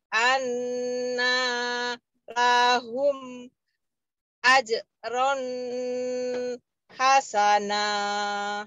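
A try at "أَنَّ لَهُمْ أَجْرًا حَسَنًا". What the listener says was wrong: Ini annanya tadi kepanjangan annalahum, kemudian ajronnya jelas. Ajron hasana.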